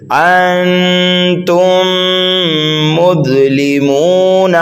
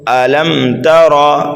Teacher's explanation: تو یہاں پر دیکھیے ادغام شفوی ہے، میم ساکن کے بعد دوسری میم آ رہی ہے، تو یہاں پر جو ہے ہم غنہ کر کے پڑھ رہے ہیں